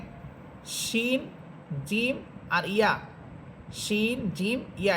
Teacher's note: এখানে শিন, জিম আর ইয়া, শিন, জিম, ইয়া, এই 3টা হরফের মাখরাজ একরকম, একই মাখরাজ। জিহ্বার মধ্যখান তার বরাবর উপরের তালুর সাথে লাগবে। আর শিন হরফের সিফাত হচ্ছে যে শিন হরফটার আওয়াজটা অনেক বড় হবে, অনেক বিকটভাবে আওয়াজ হবে এবং শাঁসা একটা শব্দ হবে।